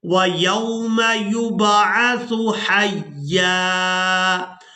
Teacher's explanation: سا کو نرمی کے ساتھ ادا کریں گے اور سا کو ادا کرتے ہوئے سیٹی کی مثل آواز پیدا نہیں ہونی چاہیے۔